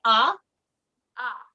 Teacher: it's a very open ah as opposed to or which is elongated and it's a little swallow right so we want to brighten up that vowel a little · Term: pure vowel